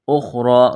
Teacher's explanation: را کو موٹا کرنا ہے، ایک الف کے برابر کھینچنا ہے